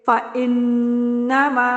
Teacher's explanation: आपने नाक में वाइब्रेशन करनी होती है, आवाज़ रखनी होती है। जैसे कि फ़इन्नमा, ठीक है, इन ये जो आप इन कर रहे हैं ये आवाज़ नाक में रख रहे हैं, ठीक है।